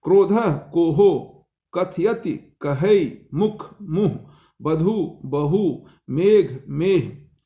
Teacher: दो स्वरों के मध्य में आने वाली प्राचीन आर्य भाषा के अल्प प्राण को लोप हो जाने से इनकी जगह अ या य श्रुति आ गई, जैसे लोचन, लोयण। स्वरों के मध्यवर्ती महाप्राण स्पर्शों का स्थान ह ने ले लिया